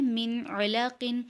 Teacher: عین حروف حلقی میں سے ہے تو یہاں بھی اظہار کا قاعدہ ہو رہا ہے